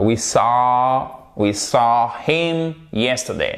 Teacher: Alors, c'est pas un we saw, c'est pas un A, c'est entre le A et le O tout de même, mais ça se rapproche un peu plus du A. Et on pousse vers l'avant, on met la langue contre les dents du bas. We saw We saw him yesterday.